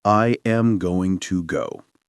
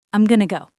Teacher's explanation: This is connected speech. We take going to and we squash it together to make gonna.